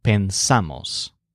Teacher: It's just pensamos because the stress is on the a vowel.